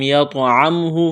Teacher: آگے طوا ساکن ہے، طوا پر قلقلہ کریں گے، طوا کو موٹا کرنا ہے۔